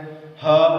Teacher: ह जिह्वा शांत है, इसीलिए इस ह का उच्चारण स्थान भी कंठ ही है।